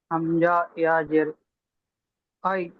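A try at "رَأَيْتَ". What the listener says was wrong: হামজা ইয়া জের নয়, হামজা ইয়া জাবার।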